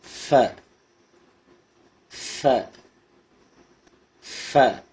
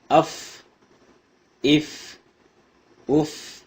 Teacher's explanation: மேல் பல்லின் ஓரத்திலிருந்தும் கீழ் உதட்டின் வயிற்றிலிருந்தும் உச்சரிக்க வேண்டும்.